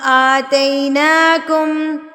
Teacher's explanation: وَرَفَعْنَا فَوْقَكُمُ الطُّورَ خُذُوا مَا آتَيْنَاكُمْ آتَيْنَاكُمْ، آ پہ کھڑی زبر ہے نا، تو کھڑی زبر کو بھی ہم نے ایک حرکت کے برابر کھینچنا ہے